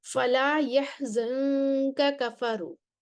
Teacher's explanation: کاف سے پہلے نون ساکن ہے اور لہٰذا اس میں قاعدے کے مطابق اخفا ہوگا